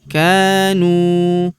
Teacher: Huruf ka kita panjangkan dua harakat karena terdapat tanda alif di depannya yang ini. · Huruf nu kita panjangkan dua harakat karena terdapat wau sukun di depannya. Yang ini alifnya tidak dibaca atau dianggap tidak ada.